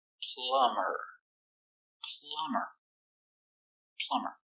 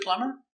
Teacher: we put e r but the B is silent